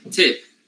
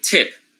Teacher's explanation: Tip. However, including the details, the sound, since it is word initial, gets aspirated.